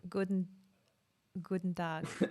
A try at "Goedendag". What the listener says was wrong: That was German. Well, it was close, but you pronounced it German. Goedendag.